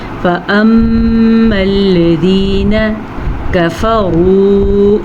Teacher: را کو پر پڑھنا ہے کیونکہ را کے اوپر پیش ہے، اور واو مدہ کو کھینچ کے پڑھنا ہے · میم کا غنہ ادا کر لیں میم کے اوپر شد کی وجہ سے